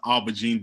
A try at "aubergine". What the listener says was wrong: You say it the French way. No R. You don't pronounce R.